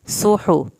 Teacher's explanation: स्वाद को पुर करें, हा को हल्क से पढ़ें।